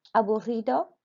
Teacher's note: remember to roll that R because it's a double R